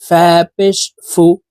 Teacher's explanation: উপরের দাঁত নিচের ঠোঁটের পেটের সঙ্গে লাগিয়ে ফা হরফের উচ্চারণ করতে হবে